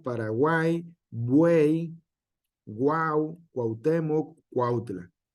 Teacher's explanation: tienen tres vocales que se encuentran juntas, que se encuentran en una misma sílaba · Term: triptongos